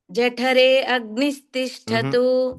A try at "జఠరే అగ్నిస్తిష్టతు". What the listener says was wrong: ఆ సపరేట్ గా చెప్పొద్దు